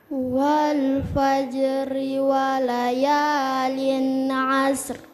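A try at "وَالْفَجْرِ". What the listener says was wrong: Oke, ri-nya perhatikan, ri turun. Ri. Coba bilang ri. Ri. Bukan ri, bukan. Ri. Ya, A, wa, wal, fa. Tetapi ini fa, Wal fajri. Ri, turun dagunya. Ri. Wal fajri. Wal fajri.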